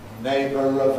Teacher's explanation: can get a ‘linking-r’ there before the following schwa